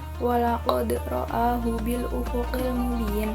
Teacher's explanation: qalqalah yang sukunnya itu sukun asli. Cara bacanya dipantulkan dengan kecil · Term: qalqalah sughra